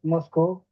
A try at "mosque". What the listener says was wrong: মস, এটা মস্কো না, এটা মস। মসজিদ ইংরেজি হচ্ছে মস, MOSQUE, বাট এটা মস্কো না, উচ্চারণটা মস জাস্ট, ঠিক আছে?